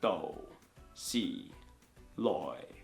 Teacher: It's a slight fall, and so it's actually a pretty accurate representation of tone four in Cantonese, which is a falling tone. It's a fall from a low pitch to an even lower pitch.